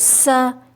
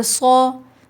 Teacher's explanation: سین کو باریک پڑھیں گے اور صاد کو موٹا پڑھیں گے